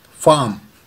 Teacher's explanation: यहाँ पे भी आर जो हम बोलते हैं वो साउंड साइलेंट है, तो इसका प्रोनाउंसिएशन होगा फार्म, फार्म।